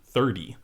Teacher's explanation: 30 or 30 you say 30 with a D sound 30 that t has been lenited it's been softened to a D sound instead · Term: lenition